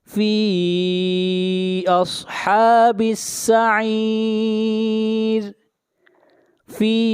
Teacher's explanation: یہاں پر مد منفصل ہے، اس مد کو 3 الف کے برابر کھینچ کر پڑھیں گے